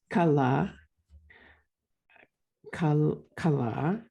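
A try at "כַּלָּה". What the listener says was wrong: So here you don't have the dot. so this first letter is a chaf. guttural chala, exactly.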